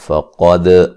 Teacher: قاف کو موٹا ادا کریں گے، دال کو قلقلے کے ساتھ پڑھیں گے، ہلا کے پڑھیں گے